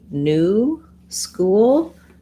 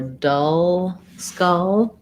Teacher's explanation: the difference is that ooh is rounded it's high back vowel oo and uh my tongue is just in the middle very relaxed in the schwa vowel